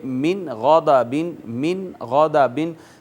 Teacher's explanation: نون پر ہم آواز چھپائیں گے نہیں، اخفا نہیں کریں گے بلکہ اظہار کریں گے اور اس کو یوں پڑھیں گے من غضبن، من غضبن، من غضبن نہیں پڑھا جائے گا۔